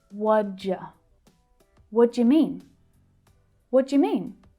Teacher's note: mean is the most important word here in this question so it's stressed we hear it really clearly but all of the others reduce down